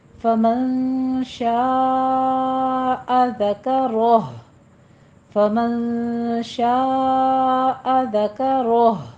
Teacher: شاء میں مد متصل واجب ہے، یہاں پہ 5 کاؤنٹ کرنا ہے، 5 حرکتوں برابر لمبا کھینچنا ہے